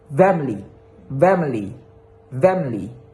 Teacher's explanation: So guys, for the second type is the vowel deletions. It means a vowel in an unstressed syllable is dropped